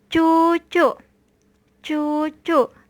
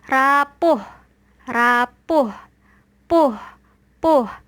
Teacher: U pada suku kata terbuka yang dibaca tinggi dan U pada suku kata tertutup yang dibaca agak rendah